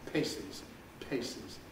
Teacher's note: there's this gap of aspiration after the release